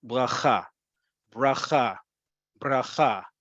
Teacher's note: Bracha or bracha, depending on how you say the letter resh or resh. Doesn't matter how you say the letter resh, it does matter that the last syllable gets the emphasis.